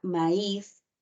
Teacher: Tú observas ahí que tenemos una A, una I, pero quien está pronunciándose con mayor intensidad es la I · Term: hiato acentual